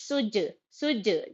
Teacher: جیم پر قلقلہ ہوتا اگر جزم کرے تو یہاں پہ قلقلہ کے جیسا کریں گے ، سج، جیم زیر جی، سجی، عین دال زبر عد، دال